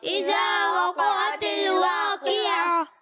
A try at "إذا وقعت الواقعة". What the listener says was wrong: آپ قوف کو ساکن پڑھ رہے ہیں. قوف ساکن نہیں ہے. وقعت نہیں وقعت الواقعة إذا وقعت الواقعة.